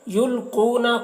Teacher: یلقون قاف کو پر پڑھیں گے، قاف حروف مستعلیہ میں سے ہے، اور یہاں پر دیکھیں واو مدہ ہے تو واو مدہ کو ایک الف کے برابر کھینچ کر پڑھیں گے